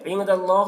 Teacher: نون میں اخفا کریں گے کیونکہ نون ساکن کے بعد دال حروف اخفا میں سے ہے